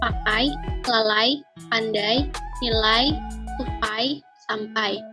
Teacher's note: Menurut Subarti, dalam bahasa Indonesia mempunyai 3 jenis diftong naik, yaitu 1. Diftong naik menutup maju, ai, misalnya pada kata pakai, lalai, pandai, nilai, tupai, sampai.